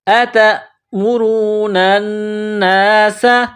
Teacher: سین میں سیٹی کی آواز پیدا کرنا ہے، سین کو باریک کرنا ہے